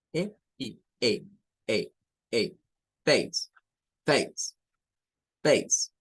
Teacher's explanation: Es un diptongo donde se une el sonido de E con el sonido I.